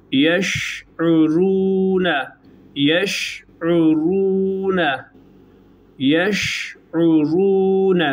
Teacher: hem ra'nın kalınlığına dikkat edeceğiz, hem de şin harfinin ağızda yayılma özelliğine dikkat edeceğiz.